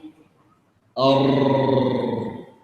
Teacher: إيش نتيجة هذا الهواء؟ فيصل الهواء فتهتز اللسان، ثم يتولد منها أكثر من راء